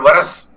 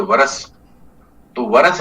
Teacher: रस के ऊपर थोड़ा घात लगाया यानी थोड़ा सा जोर दिया बल दिया इसको बोलते हैं तो जब स्वर का या शब्द के ऊपर या अक्षर के ऊपर आघात होता है। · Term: बलाघात